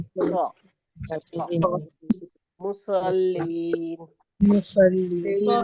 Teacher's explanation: हमारी जबान की जो नोक होती है वो नीचे वाले दांतों की जड़ में जाके लगती है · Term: साद का मखरज